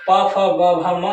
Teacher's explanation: पा, फा, बा, भा, मा ये आपके ओष्ठ वर्ण है